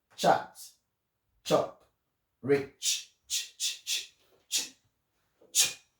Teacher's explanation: This next sound is a T with the long snake sound, which is called sh. So t sound and sh together, they make the ch sound. So this you can show your student by pressing your nose and trying to sneeze.